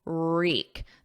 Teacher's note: There's no W, it's silent. So it starts on a R, and then the vowel is E, reek. Wreak, wreaking havoc, because it's conjugated in the present continuous because it's happening right now.